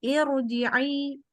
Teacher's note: Karena irji'i ji bakal hamzah wasolnya dibaca kasroh, tapi tetap walaupun bacanya i, ro-nya karena di depannya hamzah wasol dibaca tebal. Bukan ir.